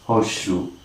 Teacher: Alright, the sound is attempting to be all the more palato-alveolar, and the alveolar sound is deleted, or rather, the alveolar sound is, of course, just dropped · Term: contextual assimilation